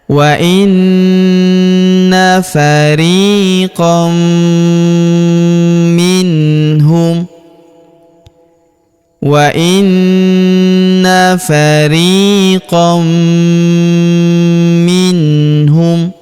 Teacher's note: Kemudian tanwin an huruf qon bertemu huruf mi. Maka tanwin annya melebur ke huruf mi kita baca dengung dan kita tahan dengungnya 2 sampai 3 harakat